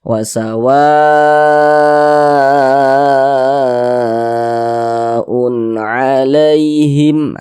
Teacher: Nah, maka dia berubahlah namanya menjadi mad wajib muttasil. Panjangnya itu boleh 4 harokat, boleh juga 5 harokat.